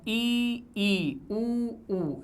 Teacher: जीभ ऊपर उठ रही है और गले में पीछे की तरफ बंद हो रहा है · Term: समृद्ध स्वर